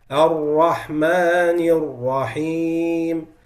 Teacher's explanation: So that's mainly for people when trying to make what we call an-nabr on the ra' with shadda. So when you have ra' with shadda, you want to increase the pitch a little bit to discriminate it between that ra' and the normal ra' without shadda.